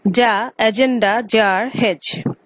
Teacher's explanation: the vocal cords vibrate as the sound is produced